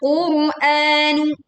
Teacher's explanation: Ro sukun didahului dhammah maka dibaca tebal.